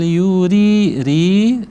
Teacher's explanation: Kita ulang. Bal ri ra-nya berharakat kasrah, ri tipis ya.